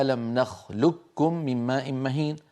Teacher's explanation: القاف من أقصى اللسان فوق، والكاف أسفل منها بقليل